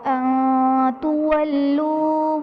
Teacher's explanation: تولو میں نون ساکن کے بعد حروف اخفاء میں سے تا آ رہا ہے تو یہاں پر اخفاء کا قاعدہ ہوگا یعنی نون ساکن میں غنہ کر کے پڑھیں گے